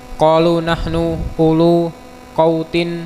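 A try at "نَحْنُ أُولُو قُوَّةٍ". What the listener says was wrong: U-nya pendek, Mas. U-nya itu tidak dibaca panjang. Nahnu ulu kuwatin.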